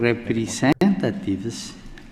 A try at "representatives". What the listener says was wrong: Again, I think if he just worked on his R sound, he would be much more clear, because representatives, and also the vowel sounds, tivs, teves, tiv, representatives, T is E sound instead of an I sound.